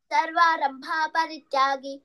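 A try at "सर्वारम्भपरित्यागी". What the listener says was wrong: అక్కడ భాకి దీర్ఘం లేదు. భాకి దీర్ఘం లేదు. సర్వారంభ పరిత్యాగి. సో ఈ మైనర్ మిస్టేక్స్ మనకి మైనర్ లా కనిపిస్తాయి కానీ మీనింగ్ మారిపోతుంది.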